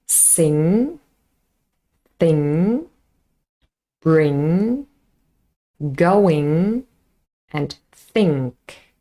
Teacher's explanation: And vibration, definitely a voiced consonant, a voiced nasal sound, and the official description is it's a voiced velar, nasal velar, because that is the place where it's formed. Let's have a look at some example words.